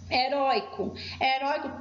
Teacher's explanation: heróico também é uma paroxítona tem a penúltima sílaba forte